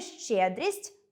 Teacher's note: У слові “щедрість” звук [т'] пом’якшує попередній звук [с] й уподібнює його до [с']